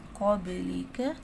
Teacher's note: با کی آواز پلٹ کے آئے گی